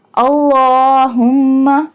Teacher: اللہ لام کو ایک الف کے برابر کھینچ کے پڑھیں گے کیونکہ اس کے اوپر کھڑی زبر یعنی کھڑی فتحہ کا نشان ہے۔